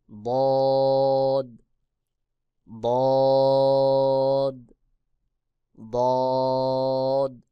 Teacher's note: জিহ্বার গোড়ার কিনারা উপরের মাড়ির দাঁতের গোড়ার সঙ্গে লাগাইয়া বদ উচ্চারণ হবে